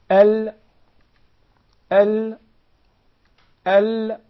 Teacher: we find the lam, its pronunciation is easier from the right side of the tongue